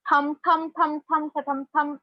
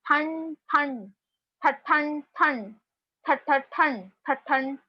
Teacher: तो ट के ग्रुप में नेजल कॉन्सोनेंट इज न, ट के ग्रुप का नेजल कॉन्सोनेंट इज न. So we will recite anuswar as n only. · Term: अनुस्वार